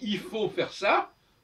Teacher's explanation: On voit bien que le L de il ne se prononce pas. Si je dis il faut faire ça, le L de il ne se prononce pas. Donc en français, le L est supprimé quand il est tout seul, quand il n'est pas suivi.